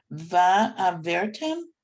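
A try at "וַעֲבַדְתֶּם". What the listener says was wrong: Almost, except that's a dalet in the middle. Va'avad-tem.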